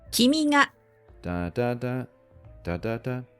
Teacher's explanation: it starts low, goes up, and then stays up even with the following particle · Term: heiban pitch accent